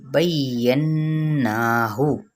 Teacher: ہا کی پیش کو لمبا نہیں کریں گے، یہ حرکت ہے